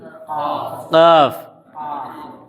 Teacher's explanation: جو زبان کی جڑ ہے اس کے اوپر جو کوا ہے، کوے سے لگا ہوا جو تالو ہے، تو جو نرم والا تالو ہے اس سے نکلتا ہے قاف